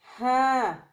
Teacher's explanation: ہاں کو وسط حلق سے ادا کرنا پڑتا ہے، یعنی حلق کے درمیان حصے کو وسط حلق کہتے ہیں، تو ہاں کو وسط حلق سے ادا کرنا پڑتا ہے۔